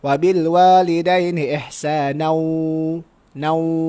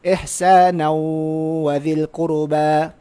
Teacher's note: tanwin tu bertemu dengan huruf waw. Jadi dia hukumnya idgham ma'al gunnah. Wajib dibaca dengan dengung. Sebab itu ma'al gunnah, iaitulah dengan dengung.